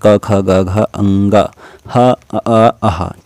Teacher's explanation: ये सभी कंठ से निकलते हैं